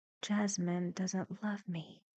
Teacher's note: one of his thoughts is that Jasmine doesn't love me actually with very low intonation